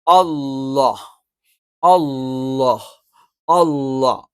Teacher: പറയുന്നത് ഈ പറയുന്ന ഒരു ഉച്ചാരണവും അല്ല മറിച്ച് ലാമിന്റെ അതേ മഹ്റജആണ് പക്ഷേ ലാമിൽ ഈ ജലാലിയത്തിന് ഇസ്മ് പറയുന്ന സമയത്ത് നാവിന്റെ മധ്യഭാഗം മുകളിലേക്ക് ഉയരും